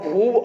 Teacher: जब हम भू अकेले बोलते हैं तो ज्यादा मात्रा यहाँ पर जो है श्वास वायु खर्च होती है, इसलिए यहाँ पर जो है बड़ा ऊ का प्रयोग होता है